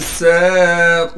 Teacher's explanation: سین کو صاف کر کے سین کی آواز میں سیٹی نکالیں گے